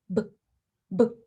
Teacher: sounds like b the b sound is not ba it is it's very short very clipped as little of that vowel sound as you can produce is what you should produce